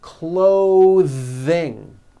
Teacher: Notice how my tongue comes out in the middle of the word and the th sound is pushed out. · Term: voiced th